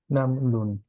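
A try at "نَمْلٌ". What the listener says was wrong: নামের পরে একটা ছোট্ট পজের মত ছিল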